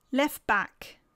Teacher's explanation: please note that in each case the last phoneme of the first word is lost · we don't hear the T. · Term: elision, Elision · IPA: /t/